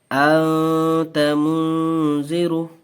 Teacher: تنوین یا نون ساکن کے بعد حروف اخفا آوے تو نون کی آواز کو ناک میں چھپا کر پڑھنا چاہیے، نوک زبان تالو سے ہٹا کر